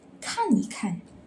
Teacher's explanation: We change the E into neutral tone, so just read it softly.